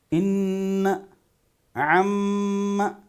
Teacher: نون اور میم پر اگر شد ہو تو غنہ کرنا ہے. ان عم، ناک میں آواز لے جانا ہے